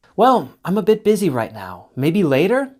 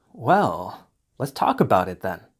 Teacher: falling intonation means I'm thinking or showing interest and still committed to the conversation